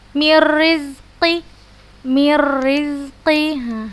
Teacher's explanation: Kalau di hukum nun sukun dan tanwin itu hukumnya idgham bila gunnah, tapi dalam sisi kesempurnaan dia idgham kamil. Secara sempurna kita hilangkan nun sukun ini, sifat dan makhraj dari nun sukun ini kita hilangkan, langsung kita baca ke huruf ro yang bertasydidnya gitu. Jadi disebutkan idgham kamil karena kita secara sempurna kita hilangkan makhraj dan sifat dari huruf nun ini yang sukun ini, langsung kita masukkan ke huruf ro yang bertasydid.